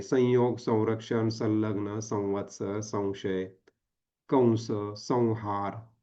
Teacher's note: इथे अनुस्वार फक्त नाकातून निघतो. इथे पंचमवर्णाचा उच्चार होत नाही.